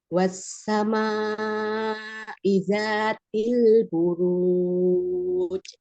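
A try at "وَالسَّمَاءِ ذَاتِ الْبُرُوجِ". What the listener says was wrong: Wassama, panjangin dulu ya, maknya berapa? Maknya 4 atau 5. Wassama izatil buruj.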